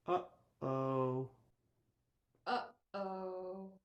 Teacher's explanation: Do you feel that hard click at the beginning of both of those syllables? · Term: glottal